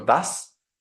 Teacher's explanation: la s es sorda también lo tenemos en el artículo das